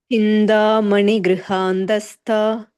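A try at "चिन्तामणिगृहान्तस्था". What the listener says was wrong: And tha is Mahaprana. And Chinta is that stressed ta. Okay, like Chinta. Chintamani Grihantastha.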